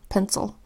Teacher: the letter I that's making a schwa vowel sound because it's an unstressed syllable and it's followed by the L that says bowl all pencil